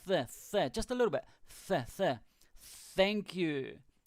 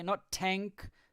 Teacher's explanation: When you say the thank you, the TH part, it's with your tongue between your teeth. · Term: the TH sound